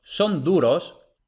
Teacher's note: Aquí tenemos que la D sí es oclusiva porque va justo detrás de la N